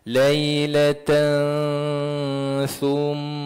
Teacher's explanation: Maka dengung dengan kadar dua harakat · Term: ikhfa hakiki